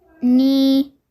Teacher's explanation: نی 2 حرکہ تو کھینچ کر پڑھیں گے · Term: مد طبعی